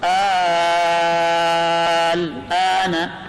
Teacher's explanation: اس میں حمزہ کے بعد الف جو ہم پڑھتے ہیں الف ملفوظی جو تلفظ میں آتا ہے یہ محل مد ہے، اور لام آل کا جو لام ہے سکون اصلی یہ سبب مد ہے. اس کی مقدار طول ہے، یہ واجب ہے، واجب طول سے پڑھیں گے